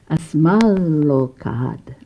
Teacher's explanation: And the da or ta became a l, became an L itself.